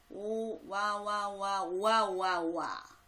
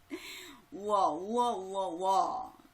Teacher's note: 여기서 공통적으로는 지금 오나 우 소리가 희미하게 나타나고 있는데 바로 이게 반모음이죠.